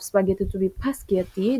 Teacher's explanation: The vowel sound schwa is inserted before the consonant cluster sp. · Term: vowel epenthesis